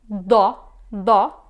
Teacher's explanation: you are not using the tip of your tongue, but you are using the middle of your tongue